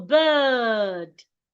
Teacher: Because of the R beside the I, the sound becomes longer.